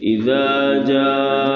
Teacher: دونوں حمزوں کو مجبورہ شدیدہ شدت کے ساتھ پڑھیں گے ، اور جاء میں رفع مد متصل ہے، اس کو کھینچیں